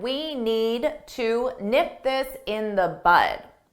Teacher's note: Notice that I didn't pronounce the D, need, because if I do that, it forces me to take a pause, which slows me down. So if you don't pronounce that D at the end, you'll be able to speak faster.